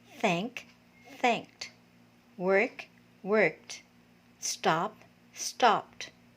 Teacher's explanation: pronounced with the sound of the letter t and these are unvoiced or voiceless consonant sounds